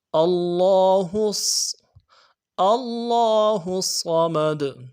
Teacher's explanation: لفظ اللہ میں وہی بات ہے کہ کھڑا زبر ہے، اس کو ایک الف کی مقدار میں کھینچنا ہے